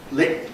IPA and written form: lɪk̚ (lick)